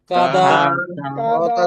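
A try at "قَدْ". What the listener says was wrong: ভাই টান দিচ্ছেন কেন? কাদা টান দিচ্ছেন কেন? খেয়াল করেন, কাদারত তাড়াতাড়ি না।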